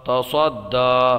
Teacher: اس دال کو ہم خوب جماؤ کے ساتھ ادا کریں گے اس لیے کہ حروف قلقلہ میں سے ہے، اور جب حروف قلقلہ مشدد ہوں تو انہیں خوب جماؤ کے ساتھ ادا کیا جاتا ہے۔